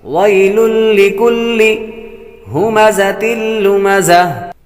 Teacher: تنوین کے بعد لام حروف یرملون میں سے آ رہا ہے اس لیے غنہ نہیں کریں گے۔ حروف یرملون 6 ہیں، 4 میں غنہ ہوتا ہے، را اور لام میں غنہ نہیں ہوتا۔